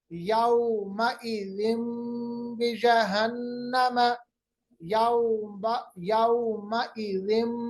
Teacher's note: मीम की आवाज निकालेंगे क्योंकि दो जेर के बाद बा आ रहा है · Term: इक़लाब